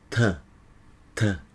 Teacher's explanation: entre duas vogais fazem assim ó tá tá pode perceber que a ponta da língua bate atrás dos dentes de cima